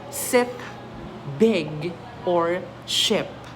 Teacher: the tongue is slightly lower and more relaxed than the long e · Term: short I